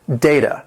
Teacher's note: This word has 2 syllables and the stress is on that first syllable. Data. For the pronunciation, you might also hear data.